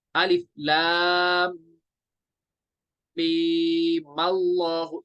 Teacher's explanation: मीम direct मिलेगा लाम के साथ, जब वसल में मिलाएंगे हमजा को छोड़ देंगे। हम पढ़ेंगे अलिफ लाम मीम अल्लाहु, इसको हम जबर देंगे, इस वाले मीम को।